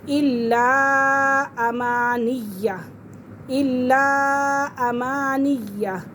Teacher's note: لا یعلمون الکتاب الا، الا نہیں پڑھیں گے کیونکہ لام کے اوپر کیا ہے، شد ہے، تشدید ہے اور لام مشدد ہے اور مشدد حرف اپنے پہلے والے حرف کے ساتھ مل کر پڑھا جاتا ہے